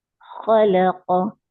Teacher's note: खा के लिए जब जबान की जड़ उठाएंगे, लाम के लिए नीचे कर देंगे, फिर काफ के लिए फिर ऊपर करेंगे